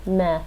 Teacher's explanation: that's a glottal stop at the end